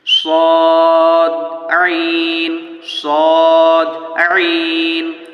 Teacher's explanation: একদম কণ্ঠনালীর মধ্য থেকে আওয়াজটি বেরিয়ে আসবে